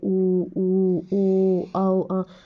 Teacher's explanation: जो होट हैं वो इन स्वरों को बोलने में पूरे गोलाकार होते हैं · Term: वृत मुखी